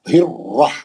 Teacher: دوسرا را جب پڑھیں گے زبر کے ساتھ والا موٹا پڑھیں گے